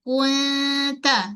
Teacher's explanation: berlaku hukum ikhfa ta huruf yang nipis. Jadi dengungnya pun dengung yang nipis.